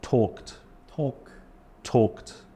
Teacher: the Ed sounds like a t